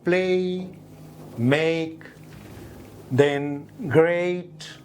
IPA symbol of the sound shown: eɪ